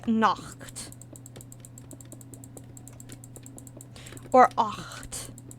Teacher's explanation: the sound itself that I'm thinking of is a velar fricative. And so because it's a velar fricative, it's really close to the K sound.